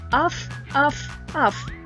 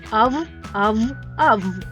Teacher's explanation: А зараз ми будемо вимовляти звуки ф та в у складах Спочатку ми будемо вимовляти звук ф глухий А потім вимовимо те саме тільки дзвінко